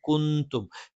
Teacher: നൂനിനെ അവ്യക്തമാക്കി മണിച്ചുച്ചരിക്കും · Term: ഇഖ്ഫ